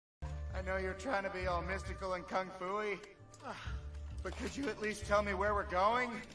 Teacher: So there is a clear rise at the end of the sentence. Although it's a complex sentence, with a noun clause which seems like a statement, the nuclear tone is still a rise. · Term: default rise